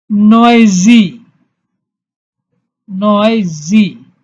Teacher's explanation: So you have to pronounce the following words from the tip of the tongue, and the sound will be long, very long sound